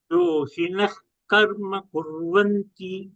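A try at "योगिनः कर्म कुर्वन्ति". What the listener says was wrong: You are telling yogi or yohi. It is the second letter is heard as he. Yoginaha.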